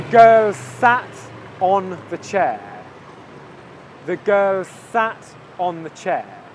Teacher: can you see that I'm only saying the s sound once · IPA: /ɡɜːlˈsæt/